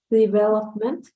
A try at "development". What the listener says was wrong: Development, right? Like in this part, because you were reading like development, right? But the stress is not here. The stress is in this part, development, in the E. Development.